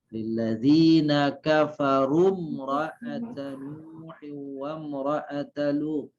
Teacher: Nah, ini kata ini kafarum itu karena ada wawu mati, ada alif, kan gitu ya. Tetapi karena kata yang setelahnya itu ada huruf yang mati, maka wawu alif alif dengan sendirinya tidak terbaca.